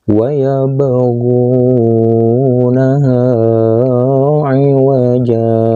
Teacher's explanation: ini adalah huruf ba yang berbaris sukun, yang harus dipantulkan membacanya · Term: qalqalah sugro